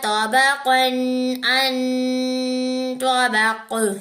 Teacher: नून के ऊपर गुन्ना करेंगे क्योंकि नून के ऊपर तशदीद है। तो को मोटा पढ़ेंगे, काफ को भी मोटा पढ़ेंगे। लेकिन काफ के ऊपर 2 जबर है, 2 जबर के बाद हरूफे हल्की में से आइन आ रहा है।